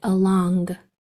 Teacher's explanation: some people really um kick out the sound of that g at the end along but usually when we speak it's along with that tongue